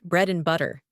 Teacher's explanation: In fast speech, small sounds can disappear because we speak with less attention to every little noise. For example, and often reduces to n. · For example, and often reduces to n, so bread and butter becomes bread and butter. The final D vanishes. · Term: illision